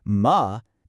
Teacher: But if you say it with a falling tone, ma, it means but